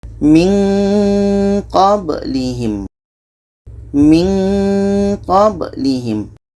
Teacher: Ketika kita menyebut nun, kita sudah merasakan huruf qa. Maka seolah-olah ada bunyi eng di situ.